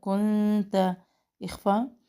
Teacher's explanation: کنت اخفا، باریک اخفا کر رہے ہیں